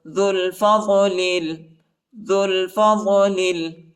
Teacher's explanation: ذال کو لام کے ساتھ ملائیں گے، وہ اور الف نہیں پڑھا جاتا، وہ اور الف کے اوپر حرکت نہیں ہے، اور لام کو لام کے ساتھ ملائیں گے، الف نہیں پڑھا جاتا، الف کے اوپر حرکت نہیں.